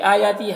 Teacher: بھی آیاتی، حمزہ اور یا میں دونوں میں کھڑا زبر ہے، کھڑا زبر الف مدہ کی طرح ہوتا ہے تو اسے 1 الف کے برابر کھینچیں گے دونوں کو۔ تی میں یا مدہ ہے، اسے بھی 1 الف کے برابر کھینچیں گے۔